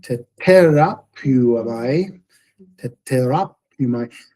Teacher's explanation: that first tau is pronounced without a puff of air